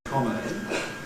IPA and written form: ˈkɒmə ɪn (comma in)